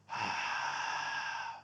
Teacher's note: sounds a bit like darth vader so it's like a so you can hear how my vocal cords come together and block breath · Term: ujjayi breath